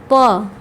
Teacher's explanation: तो प ध्वनि का उच्चारण स्थल जो है ओष्ठ है।